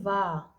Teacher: तो वाह का उच्चारण स्थान है दंत और ओष्ठ